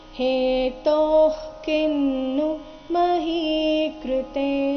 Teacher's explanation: ತೋ ಆದ ನಂತರ ಇರೋ ವಿಸರ್ಗದ ಉಚ್ಚಾರಣೆ ಅರ್ಧ ಕ ರೀತಿ ಬರಬೇಕು